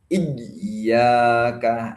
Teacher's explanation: terlalu ditekan sehingga suara tidak mengalir dan tertekan. Jadi penekannya biasa aja.